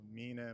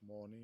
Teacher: There is the higher vowel from Proto-Germanic a1 like Biblical Gothic has